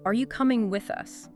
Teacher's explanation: And they point out how your voice naturally goes up a bit on you and with us, then maybe drops at the end. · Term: rise and fall